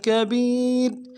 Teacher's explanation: فی ضلال کبیر کبیر میں کاف کو نرمی سے ادا کرنا ہے، با کو یا کے ساتھ ملائیں گے، یا مدہ ہے ایک الف دال میں کھینچیں گے، را کے نیچے تنوین ہے، غنہ کریں گے. اور وقت کی صورت میں را کو جزم سے بدلیں گے، باریک پڑھیں گے